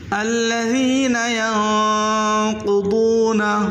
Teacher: قاف کو موٹا کریں اور ضاد کو بھی موٹا کر کے پڑھیں